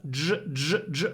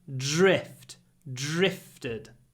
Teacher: When we have dr, we pronounce it zh